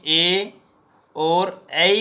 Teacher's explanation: ए और ऐ का उच्चारण स्थान कंठ तालु होगा। कंठ प्लस तालु कंठ तालु।